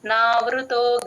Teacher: వృ sound రాకూడదు stress అస్సలు ఇవ్వకూడదు వట్రసుడికి